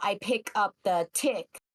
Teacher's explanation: kids will either drop the S sound. So stick becomes tick instead.